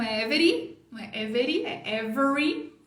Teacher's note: esse R é o r enrolado de porta então enrola a língua antes de fazer every